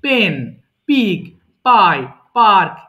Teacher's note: এবং এই পিটা আমরা সাউন্ড করলে দেখবা মুখের সামনে বাতাস বের হবে।